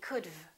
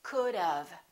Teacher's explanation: we put a little uh sound in there and it sounds like this could of